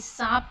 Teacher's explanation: दांत और मसूड़ा जहाँ पे एकदम मिला हुआ रहता है, जब हम दंते स को बोलते हैं तो हमारी जीभ उस स्थान को छूती है।